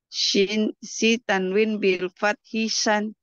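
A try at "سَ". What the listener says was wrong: Sin. Bukan shi, bukan shin. Sin dulu. Sin, sesi su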